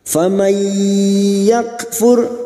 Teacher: Faman nun sukun bertemu ya idgham biguna, siap masuk ke huruf ya dan mendengung selama 3 harokat. Faman yakfur kaf sukun yang memiliki sifat syiddah dan hamas.